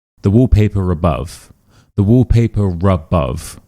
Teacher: if it ends in an R sound and the next word starts with a vowel sound, we do actually say this R, and this is called the linking R. So, wallpaper above. · When we say wallpaper, there's no R. When we say above, there's no R. But when we say these words together, the wallpaper above, we do actually include this R.